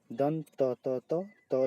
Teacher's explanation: त वर्ग का उच्चारण होता है दंत से